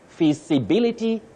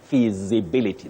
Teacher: you have the sound Z which is a voiced sound you don't say s visibility no you say feasibility